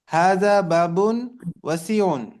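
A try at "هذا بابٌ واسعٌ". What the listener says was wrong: ওয়াসিউন একালিফ টান হবে। হাদা বাবুন ওয়াসিউন।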